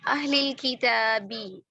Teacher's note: किताब में क्या कर दिया बा पर कलकला नहीं किया अच्छा वफ करते हुए कलकला ड्रॉप कर दिया